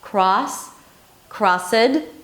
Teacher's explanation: when the D appears after a voiceless consonant, for example, s, k, f, sh, then the D turns into a T.